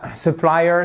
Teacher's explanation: accent tonique sur la deuxième partie, la deuxième syllabe.